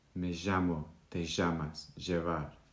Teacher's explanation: in places like Argentina and Uruguay, it's more like a sh or j sound